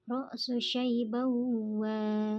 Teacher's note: ada fathatain atau tanwin yang bertemu dengan waw, maka dibaca melebur dan mendengung. Itu nama tajwidnya idgham bi gunnah.